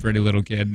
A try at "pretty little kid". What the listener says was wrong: I did, but you're putting the emphasis wrong. It's deviant when you say it, and it was innocent when I did.